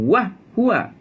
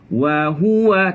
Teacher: Jangan wah huwa. Lembutkan wa. Wa huwa, tekan hu.